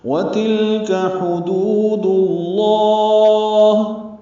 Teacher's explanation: ہا وسط حلق سے ادا ہوگا، دو و مدہ دو حرکات لمبا کریں گے۔